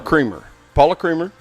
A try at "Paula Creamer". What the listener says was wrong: Wait, is her last name Creamer or Kramer? I know it's spelled Creamer, but I think it's pronounced Kramer. Kramer.